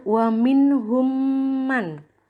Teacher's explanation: Kalau ada mim sukun bertemu dengan mim, maka ini cara membacanya memasukkan. Jadi mim sukun dimasukkan ke dalam mim yang ada harokatnya. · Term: idgham mimi